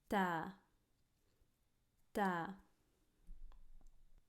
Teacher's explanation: The other thing is that the flow of air when you're producing the ta is stopped. It's blocked, right? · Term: voiceless sound